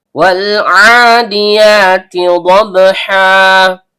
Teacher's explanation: Ain, tenggorokan bagian tengah, karena ainnya berharokat fathah berdiri atau fathah panjang, maka terjadi hukum bacaan mad tabi'i panjang 2 harokat dan setiap panjang keluar dari rongga mulut.